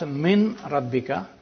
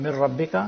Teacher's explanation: This is complete assimilation, mir rabbika. Noon completely is lost. It becomes ra.